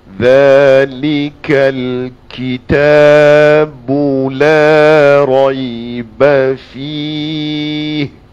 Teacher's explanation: Za daripada hujung lidah di antara gigi hujung gigi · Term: huruf za